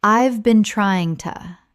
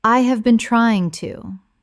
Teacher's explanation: When spoken naturally, the h in have often disappears and the words run together. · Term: connected speech